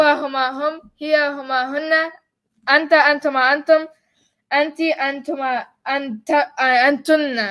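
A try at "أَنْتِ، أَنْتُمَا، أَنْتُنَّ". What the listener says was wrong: Oh, you said antunna twice.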